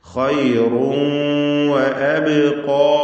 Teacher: അബ്ഖാ അബ് എന്നതിലെ ബാഇന്റെ സുക്കൂൻ ഖൽഖല സൂറ നൽകി ശബ്ദം ഹറക്കത്ത് പോലെ വ്യക്തമാക്കി ഉച്ചരിക്കണം.